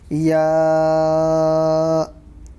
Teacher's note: زبان کے بیچ والے حصے سے یا ادا ہوتا ہے